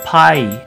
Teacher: When we want to represent the English sound I, as in the word pie, in the Japanese katakana system, we simply change that to the 2 vowels a and e. So pie will turn into pai.